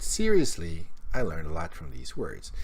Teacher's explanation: And as he says, seriously, his voice rises. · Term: intonation